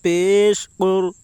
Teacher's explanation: قاف کے اوپر پیش ہے، پیش کو جلدی پڑھیں، تھوڑا بھی نہ کھینچیں. معروف پڑھیں، مجہول آواز سے بچیں.